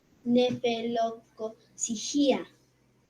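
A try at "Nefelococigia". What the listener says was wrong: Esta palabra, la mayor fuerza de voz está en la sí, porque si dirías gia, ahí le vería una tilde, y no hay una tilde.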